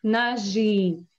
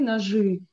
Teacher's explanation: We pronounce it like «ы», but write down «и».